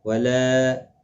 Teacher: لا الف مدہ ہے، ایک الف کی مقدار کے برابر کھینچ کر پڑھیں گے